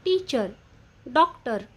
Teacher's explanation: आणि शेवटचा ध्वनी आहे शुआ. याचा उच्चार अतिशय हलका अ असा असतो